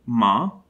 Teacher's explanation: the bilabial nasal ma